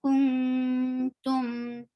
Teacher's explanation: Circle your lips for dhamma and give tawassut on T. Why? Because you can see these letters, Lin Umar, and this meme is one of them, and you are giving capital T, and what it stands for, tawassut.